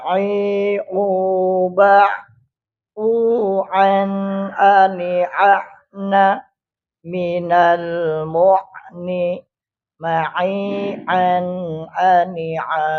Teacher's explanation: Tengah tenggorokan itu huruf ain.